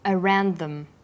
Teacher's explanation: the final d sound in around is similar in pronunciation to the first sound in the word them this means the sounds are articulated